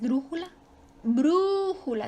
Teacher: su sílaba tónica está en la antepenúltima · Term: esdrújula